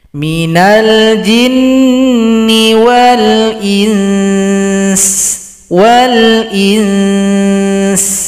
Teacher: Kalau berhenti di sini berikan dulu hukum bacaan ikhfa. Dingungkan dulu setelah samar-samar baru diberikan vokal huruf sin.